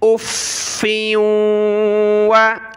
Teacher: और वाव के यहाँ हमने नाक में आवाज़ पैदा करनी है।